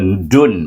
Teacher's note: Dun hendaklah dibaca dengan gunnah dua harakat, iaitu wajibul gunnah, dua harakat.